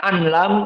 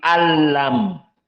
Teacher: Nun Sakinah bertemu dengan lam Idam Bil gunah dinamakan idgham dikarenakan Nun di sini tidak dibaca tetapi masuk kepada lam